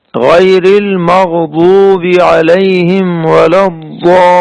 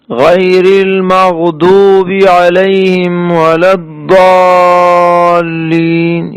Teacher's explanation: یہ اصل میں ضاد کے مخرج سے ضاد نکالا گیا ہے، یہ دال بھی نہیں ہے